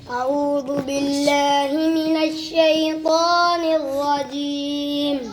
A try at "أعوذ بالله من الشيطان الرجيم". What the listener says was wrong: आपका लगता है आऊदु दाल लगती है, आपने पढ़ा, फिर पढ़ो।